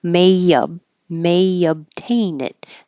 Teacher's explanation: there's kind of an invisible Y